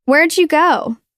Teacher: The word did is reduced to just a d sound attached to the question word.